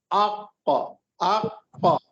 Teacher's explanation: آپ کو خود محسوس ہوگا کہ زبان کی جو جڑ ہے وہ اوپر تالو سے لگ رہی ہے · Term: قاف